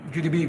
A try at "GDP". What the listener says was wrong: It says GDP. Instead of GDP, he said GDP. Is it because you don't have the P sound in Arabic? I mean, you're speaking English. You have to say the P.